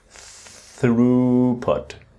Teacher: the th with the breathing out where the tongue touches the teeth just the tip